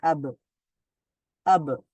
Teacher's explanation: ব এর পরে একটা আ সাউন্ড ছিল সেরকম আর কিছু থাকবে না শুধু ব সাউন্ডটাই হবে